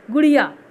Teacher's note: जब हम एक झटके में बोल रहे हैं बिना दबाव दिए गुड़िया, तो ये है ह्रस्व उ